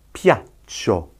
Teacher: The double C just means you have to prolong the sound. Yes, you'll hear a gap after it.